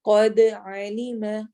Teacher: قد قاف موٹے حروف میں سے، دال پہ کلکلا ہوگا